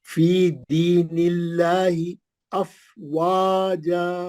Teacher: دی مد اصلی ہے. نلاہی لام جلالہ پتلا پڑیں گے, نون پہ زیر ہے, موٹا نہیں پڑیں گے لام جلالہ